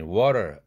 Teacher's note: 이 단어를 미국 영어 발음에 water 이렇게 발음하면 힘들지 않고 매끄러움을 느낀다. 그 이유는 t를 자음 중 가장 울림도가 높은 유성음인 설탄음으로 발음해서 앞뒤에 있는 모음의 울림도와 비슷하게 유지하기 때문이다